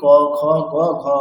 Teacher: পূর্ণ খারের উচ্চারণ স্থান হচ্ছে কণ্ঠ যেটা আমরা প্রত্যেকে করে থাকি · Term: পূর্ণ খকার